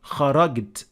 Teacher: So this would change the meaning. Or if you want to use the Egyptian dialect of Arabic, they turn jim into g